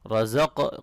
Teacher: یہاں میم مشدد پہ غنہ کریں گے، الف مدہ ہے